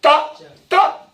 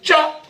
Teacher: ता जीभ कहां लग रही है? दांत को, और चा जीभ लग रही है मुड़ के तालू को।